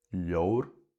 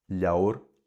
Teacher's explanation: Munster leans more to the o pronunciation, Connacht leans more to ow. Sometimes it's o in Ulster, but Ulster also has the extra option of a long o sound, so aw.